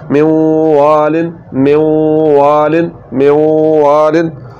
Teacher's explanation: اب یہ دوسری مثال دیکھیں، یہ آ گیا من والن، یہاں پر نون ساکن کے بعد واو آ گیا جو کہ حروف جر معلول میں سے یؤمنو میں سے آ گیا، تو یہاں پر واو کے آ جانے کی وجہ سے نون کو جب ہم واو میں ملائیں گے، نون کا جب واو میں ادغام ہوگا تو یہ ادغام میں ناقص ہوگا، کیونکہ نون کی صفت غنہ باقی رہ رہی ہے، تو نون کی صفت غنہ کا باقی رہ جانا یہ ادغام میں ناقص میں ہوتا ہے۔